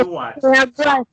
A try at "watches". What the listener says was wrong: Entonces, esa S tiene que sonar al final, cuando la pronunciamos. Sin miedo, watches.